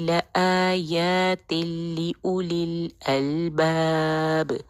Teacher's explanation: آیات کو آیتن نہیں کہنا، 2 کاؤنٹ آ کو بھی اور یا کو بھی بالکل برابر لمبا کرنا ہے